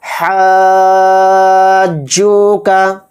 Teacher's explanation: اس میں مد لازم کا قاعدہ ہوگا اور اس کو 5 الف کی مقدار ہم کھینچ کر پڑھیں گے